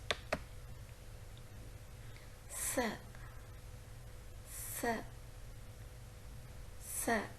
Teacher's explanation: It is a voiceless alveolar, so we couldn't see any kind of vibration in the vocal cords. S, s, s. The blade of the tongue raises towards the teeth ridge. · The blade of the tongue raises towards the teeth ridge. The air passes through the sides of the tongue to articulate the sound S.